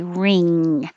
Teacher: The back of the tongue goes very high, ing, like when you say ring, and the tongue blocks the air to the mouth and makes it go through the nose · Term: ng sound